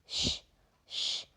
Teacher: so now when you pronounce uh the sound sh then can you feel the vibration in the throat no we cannot feel the vibration so it is UN voiced